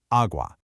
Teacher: The a is stressed and it makes this wide open a sound. You really want to hit that first syllable with confidence and let the second one just kind of fall away.